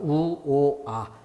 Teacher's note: 우보다 오는 입이 벌어진다. 그리고 거기서 아는 더 벌어진다.